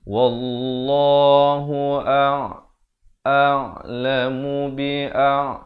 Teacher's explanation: Bukan kum tapi kum ya. Kaf baris depan kita baca dengan bunyi ku, bukan bunyi ko. · Wallah, dibacakan lafzu jalalah ini dengan tebal.